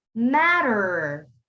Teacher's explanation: it's going to make a d sound but it also has an r at the end